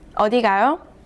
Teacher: read the last syllable with a rising tone